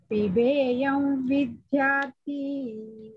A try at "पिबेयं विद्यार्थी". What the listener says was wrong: Thi, Mahaprana. विद्यार्थी,